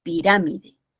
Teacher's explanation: lleva acento cierto la esdrújula también llamada propagar ox y toná lleva la mayor fuerza de voz en la ante penúltima sílaba